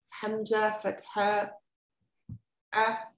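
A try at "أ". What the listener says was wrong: Not a, be careful, don't say ayn, just a, like a in English, okay? A.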